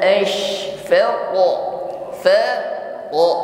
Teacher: pantulan huruf q menebal naik ke langit-langit mulut Kenapa demikian sifatnya istila posisi lidah saat itu naik ya suaranya